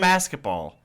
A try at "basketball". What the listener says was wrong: It sounds like you're saying like masculine basketball.